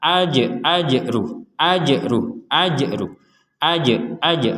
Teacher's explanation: perhatikan huruf Jim yang sukun ini kita pantulkan AJ AJR AJR AJR AJ AJ huruf jimnya dipantulkan AJ sebagaimana